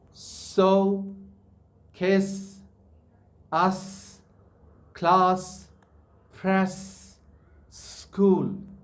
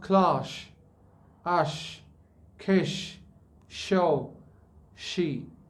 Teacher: When you say so, the tip of the tongue remains straight. Neither it lets the middle part of the tongue raise up or down.